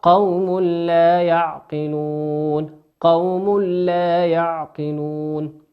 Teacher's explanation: قوم تنوين أتى بعده حرف اللام، واللام من حروف الإدغام بغير غنة